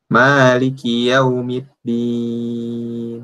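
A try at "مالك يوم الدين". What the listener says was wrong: Yaumiddin. Nah, itu masih nyampur dengan tak tuh. Yaumiddin. Jangan ada campuran tak situ. Yaumiddin.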